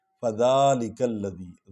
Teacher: ذا کو لمبا کریں گے کیونکہ اس پر کھڑا الف ہے۔ فذالک الذی، کاف کو لام کے ساتھ ملائیں گے کیونکہ اس پر شد ہے۔